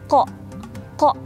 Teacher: Jadi pangkal lidahnya itu ketemu sama langit-langit lembut bagian atas. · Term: qaf